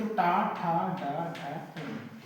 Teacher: मूर्धा कहेंगे। तो ये मूर्धा को स्पर्श करती है।